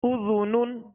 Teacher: زال کو نرمی کے ساتھ ادا کریں گے، اس میں سیٹی کی آواز پیدا نہ ہو